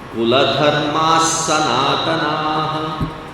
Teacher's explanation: That visarga is pronounced halfway as the following sa, sha, or sha.